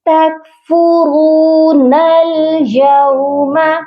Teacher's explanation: درمیان میں جو حمزہ وصلی ہے اس کو ہم نہیں پڑھیں گے